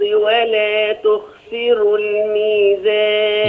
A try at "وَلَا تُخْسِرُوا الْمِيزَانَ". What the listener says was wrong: نفخم الراء. ولا تخسروا الميزان.